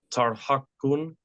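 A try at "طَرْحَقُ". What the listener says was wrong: Yep. Tarhaqu. Okay. Tarhaqu. Very good.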